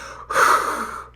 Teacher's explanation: 목구멍을 닫지 않고 완전히 열린 상태에서 밖으로 나갈 때 나는 소리가 흐